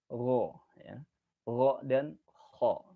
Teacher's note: tenggorokan bagian atas atau adnal halq itu hurufnya juga ada 2, yaitu kha dan ghain